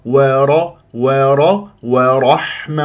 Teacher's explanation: ر مفخمه مفتوحه تقرع ولا اكور الشفاه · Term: را مفخم